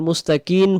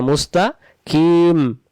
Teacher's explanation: সিরাতাল মুস্তাকিম, মুস্তাকিম, অনেকে এটা আবার মুস্তাকিন পড়ে ফেলে, মুস্তাকিন না মুস্তাকিম, দুই ঠোঁট লাগবে